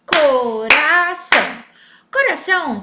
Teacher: tônica da palavra pois ela foi pronunciada de maneira mais forte neste caso são que é a última sílaba da palavra também é a sílaba tônica por isso coração é uma palavra oxítona